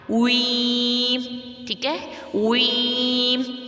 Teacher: تو یہاں پر دیکھیں فی احسانی وی نہیں پڑھنا، وی نہیں پڑھنا، ویم نہیں پڑھنا، ویم. پہلے ہونٹوں کو پراپر سیٹی کی طرح گول، پھر واپس زیر کی طرف آنا ہے